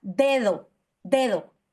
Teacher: y pronunciamos la primera de acuerdo es la primera que pronunciamos después de una pausa, ¿de acuerdo? La vamos a pronunciar como oclusiva alveolar.